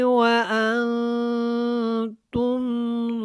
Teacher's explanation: وا کے اوپر کھڑی زبر ہے، اس کو ہم نے تھوڑا سا کھڑا کر کے ادا کیا، وا ویسے بھی موٹا ہے